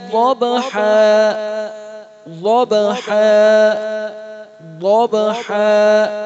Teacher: ضاد موٹا، با پر قلقلہ اور حا